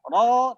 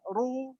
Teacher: Jadi aslinya itu ro tebal, ru agak tipis, ya tapi masih tebal, ri baru paling tipis.